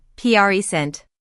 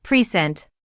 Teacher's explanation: When we say present as a noun, meaning a gift, the stress is on the first syllable, present. But when it's used as a verb, like to present an idea, the stress moves to the second syllable, present. This is common in English, and it helps the listener immediately understand how the word is being used in a sentence.